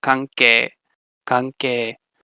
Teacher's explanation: So here, with kanke, right, that in is this underspecified nasal, but because it's followed by a velar stop, the K sound, it assimilates to the velar place of articulation, becoming a velar nasal. So kanke, kanke.